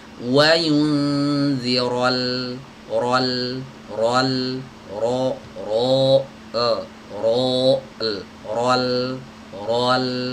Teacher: Ro-nya tebal tapi lamnya jangan ikut-ikutan tebal ya. Jadi ro-nya tebal, ro-nya saja yang tebal, lamnya tipis. Rol, rol, rol, rol, bukan rol, rol, rol.